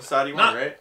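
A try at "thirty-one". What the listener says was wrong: Yeah, Sati one, not 31. Sati one. The TH sound is difficult, right?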